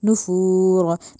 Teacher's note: नुफूर में जो रॉ है उसको मोटा करना है